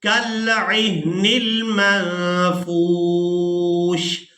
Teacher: اب یہاں پر دیکھیں کہ نون ساکن ہے اور اس نون ساکن پر ہم نے اخفا کرنا ہے، آواز کو ناک میں چھپائیں گے اور اس کے بعد یہاں پر آپ لوگ علامات وقف دیکھ رہے ہیں. وقف کی صورت میں ہم نے شین کو ساکن کر دینا ہے، فا کو واو ساکن اور شین ساکن کے ساتھ ملا کر ادا کریں گے.